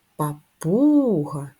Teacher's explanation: наголос на у на другий склад